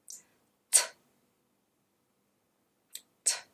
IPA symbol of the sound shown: t